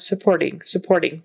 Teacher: that t is kind of a tap t